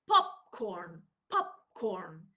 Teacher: there is a longer second stage a longer hold or compression stage because the air stays inside for a longer time · the final pearl in pop is not pop it's pop and i sort of keep the air inside i don't release it so that when i pre when i pronounce the second word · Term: two plosives together